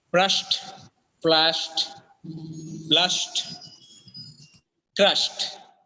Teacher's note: The last sound of each root word is sh. When it adds ed to become past tense, the last sound is t.